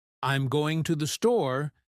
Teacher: you'll hear the emphasis on going and store, but I'm and to the are barely noticeable